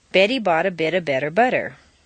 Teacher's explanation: all of the T's are in weak positions, so they all sound like soft D's